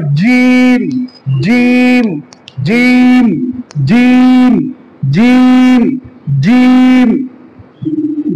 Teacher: জিম হচ্ছে জিহ্বার মধ্যখান, ওই বরাবর তালুর সঙ্গে মিলিয়ে উচ্চারণ করতে হবে, জিহ্বার মধ্যখান এবং তালুর মধ্যখানের সঙ্গে উচ্চারণ করতে হবে